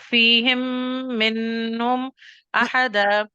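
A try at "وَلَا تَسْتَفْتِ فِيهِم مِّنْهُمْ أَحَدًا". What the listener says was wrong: ادھر نہیں لمبا کرو نا، آپ یہ لمبا کریں گے، آپ میم کا غنہ کر کے اسٹریچ کرو گے، میم اور نون پہ آپ نے اسٹریچ نہیں کرنا.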